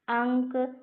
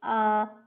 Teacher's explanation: अंक अनुस्वार है, अ अनुनासिक।